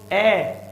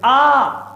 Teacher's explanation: ए आधा खुला, अर्ध विवृत आधा खुला, लेकिन आ खुला हुआ, थोबड़ा पूरा खुल जाता है।